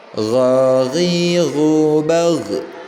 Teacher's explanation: Gak boleh ada pantulan di huruf ghinnya ketika sukun huruf ghinnya, karena huruf ghin itu bukan merupakan bagian dari huruf-huruf qalqalah ya, yang qaf, ta, ba, jim dan dal ya, bukan termasuk dari huruf-huruf itu ya, jadi tidak boleh dipantulkan.